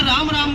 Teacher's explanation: र का उच्चारण स्थान है मूर्धा, आ का उच्चारण स्थान है कंठ और मैं का उच्चारण स्थान है ओष्ठ।